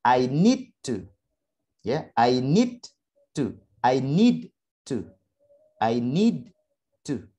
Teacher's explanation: Ada d sama t. Serupa, saya ambil suara yang t saja. Yang d saya buang.